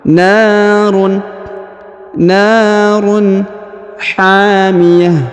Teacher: Huruf na dibaca panjang yang ini 2 harokat karena di depannya terdapat alif. Huruf tanwin run dibaca jelas ya atau izhar.